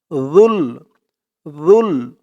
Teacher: জিহ্বার মাথা উপরের দাঁতে এর মাথার সাথে লাগবে জালের উচ্চারণ করার সময়